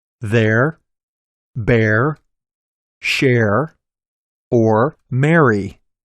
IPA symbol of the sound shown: ɛr